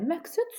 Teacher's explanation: Bəli, məqsəd sözündə q k tələffüz olunur. Niyə? Çünki qaydaya əsasən sözün ortasında q samiti gələrsə və özündən sonra kar samit gələrsə, qimi tərəf olunur.